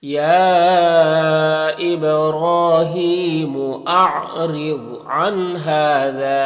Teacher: اور یہاں پر یا مدہ ہے، ایک الف کے برابر کھینچیں گے. یہاں پر را کے نیچے زیر را کو باریک پڑھیں گے، ضاد حروف مستعلیہ میں سے پر پڑھیں گے. · با میں قلقلہ ہوگا، را کے اوپر کھڑا زبر ہے تو ایک الف کے برابر کھینچیں گے اور را کو پر پڑھیں گے